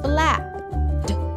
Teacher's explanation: you don't hear the E in ED after a P